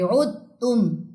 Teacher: عین کی پیش تا کی تشدید سے ملے گی